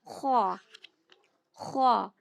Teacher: خوا میں تھوڑا خراش کی آواز آتی ہے